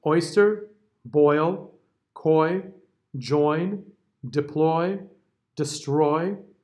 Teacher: So we start with the open O, right? Open O, followed by the I.